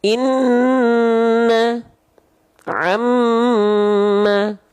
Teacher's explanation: kalau Nun dan mim bertasdid baru dia ditahan dua harakat